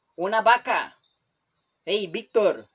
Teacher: in Costa Rica since you are a kid you never pronounce V only B